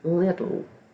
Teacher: TT le that's the word little now doesn't really sound like the T sounds more like the D because of the co articulation that the adjacent sounds that change the dynamics of